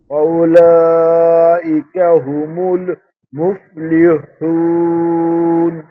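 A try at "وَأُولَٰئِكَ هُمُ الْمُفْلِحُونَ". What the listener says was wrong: এই শেষের হুটা আরেকটু গলার মধ্যে যেতে হবে। হুন, হুমুল মুফলিহুন।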